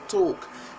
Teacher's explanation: when you want to say talk remember the L is not really pronounced so it's talk and Americans would say talk or talk yeah